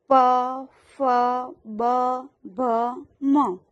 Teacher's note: જીભ દાંતને અડે છે ત થ દ ધ અને ન ઓષ્ટ્ય આ વ્યંજનોનો ઉચ્ચાર હોઠથી થાય છે એટલે કે હોઠ વળે છે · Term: ઓષ્ઠ્ય